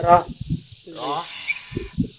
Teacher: লম্বা হা হা গলার মধ্যখানে বাতাসটা নিয়ে